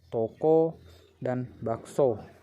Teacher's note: direalisasikan sebagai bunyi O tengah atas bundar belakang apabila berada pada silabel terbuka